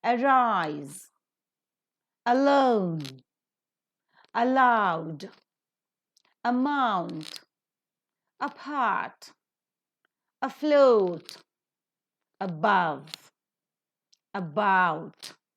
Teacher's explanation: all these words begin with the weak prefix a and so the root word are given stress